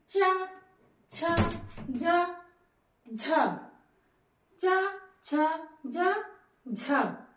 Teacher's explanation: तालू हमारे मुख के भीतर के छत का पिछला भाग सक्रीय है इसको बोलने में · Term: च वर्ग